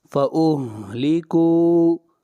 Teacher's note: کاف کو کھینچ کر پڑھیں گے، مد اصلی